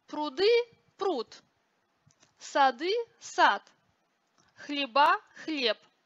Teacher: оглушение звонких согласных на конце слова